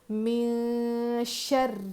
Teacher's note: نون ساکن کے بعد حروف اخفا میں سے شین آیا تو اخفا کر کے پڑھیں گے۔ من شر، یہ بھی را مشدد ہے، را پہ تشدید ہے تو را کو سختی سے پڑھنا ہے، اور را پر زیر ہے تو را کو باریک پڑھنا ہے۔